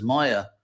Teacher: This is not Maya with the long A, which means illusion. This is Maya, the short A, which is the that sort of mystic architect and builder of the Asuras, Maya.